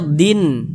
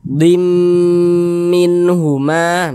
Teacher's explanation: Yang dimasukkan itu bunyi tanwinnya nih dimasukkan ke huruf mim. Kita baca dim, jangan dibaca din, jangan dibaca din min huma, jangan. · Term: idgham bi gunnah